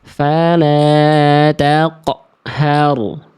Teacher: jadi udah mantul tapi di ujung pelafalannya dia tertahan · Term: pantulannya itu tertahan